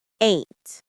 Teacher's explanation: The pronunciation is one syllable. Ain't. It rhymes with paint or saint.